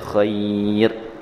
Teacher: Jadi kita sebut dia dengan lembut. Maka dia tidak panjang seperti mana huruf mad. Huruf mad dua harakat tapi huruf lin satu harakat.